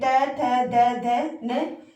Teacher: त थ द ध न ये ये हमारे जो है दंत से जो है इनका उच्चारण होता है।